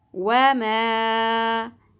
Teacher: वाव की ज़बर ज़्यादा नहीं खींचनी, मीम की ज़बर को अलिफ हरफ मद्दा के साथ मिला के एक अलिफ के बराबर खींचना है। मीम अलिफ ज़बर मा, व मा, ता ज़बर ता बारीक होगी, ज़बर छोटी रखनी है।